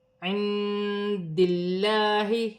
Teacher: اللہ کی لام سے پہلے زیر آ رہی ہے، اللہ کی لام باریک پڑھی جائے گی